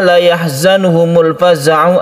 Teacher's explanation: Yang pertama, la yahzanuhumul faza'u, ada al bertemu dengan fa, kita sebut dengan izhar qamariyah. Alnya dibaca jelas dan tidak dimasukkan ke huruf berikutnya.